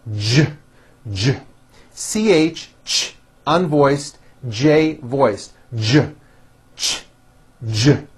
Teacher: if you take this CH sound and you keep everything in your mouth the same you just add voicing it becomes an American J sound